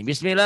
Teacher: ya Bismillahirrahmanirrahim ini bismillah lafad Allahnya dibaca bismillahnya Dibaca tipis tipis Kenapa dibaca tipis karena berbaris bawah karena sebelum sebelumnya sebum Allah ada ada kasr berbaris bawah sebelum